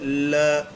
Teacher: जब इस वर्ण का उच्चारण करते हैं ल का तो जीभ के बगल से वायु गुजर जाती है। बगल पार्श्विक का मतलब ही यही होता है। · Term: पार्श्विक व्यंजन